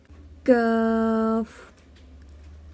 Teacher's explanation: زبان کی جڑ جب سخت تالو سے لگتی ہے تو کاف ادا ہوتا ہے